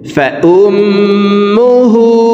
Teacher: দেখুন এভাবে পড়তে হবে, وأما من خفت وأما من خفت موازينه وأما من خفت موازينه وأما من خفت موازينه فأمه হার উপরে উল্টা পেশ আছে, তাই এই হাকে 2 ঠোঁট গোল করে 1 আলিফ টেনে পড়ব।